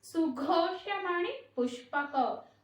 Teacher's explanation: ఆ ఘో అనేది కూడా మహాప్రాణ అక్షరం అండి